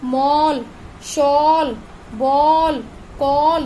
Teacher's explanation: ये ध्वनियां हैं ओ, आ नहीं, ओ, मतलब आ में ओ की आवाज भी आ रही है